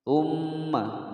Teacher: Tsumma mim bertasydid, ditekan ditahan selama 2 ketukan. Gunnah musyaddadah.